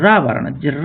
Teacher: रा वर्ण जब भी बोलते हैं तो ये लुढ़कता है, ऐसा लगता है ये लुढ़कते हुए जा रहा है, जीभ में कंपन करता है, इसलिए इसको बोलते हैं प्रकंपी या लुंठित ध्वनि।